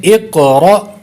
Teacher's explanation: حمزہ ساکنہ پہ جھٹکا دیں گے، جھٹکا کے ساتھ پڑھیں گے